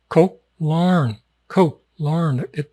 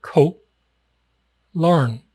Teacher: It's not Koh Larn. The Koh is pronounced a little bit abruptly, just a little bit abruptly.